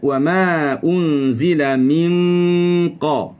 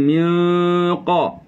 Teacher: lidah dinaikkan ke lelangit, menyentuh lelangit. Untuk qaf lebih ke dalam, untuk kaf keluar sedikit. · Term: ikhfa hakiki